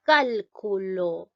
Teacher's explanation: la mayor fuerza de voz está llevando en la sílaba cal ya en esta sílaba cal ahora observamos esta sílaba cal donde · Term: palabra esdrújula, esdrújula